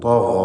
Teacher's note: ഗൈനും അപ്രകാരം തന്നെ. ഗൈനിൻ്റെ ദീർഘാക്ഷരമായ അലിഫിലും തഫ്ഖീം വേണം.